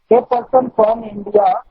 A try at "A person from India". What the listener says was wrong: The person नहीं है, वो ए पर्सन है।